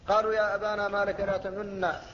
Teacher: النون ساكنة، لا لكن أسكنت النون، فالنون ساكنة ولكن أشمت بشيء من صوت الضمة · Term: إشمام السكون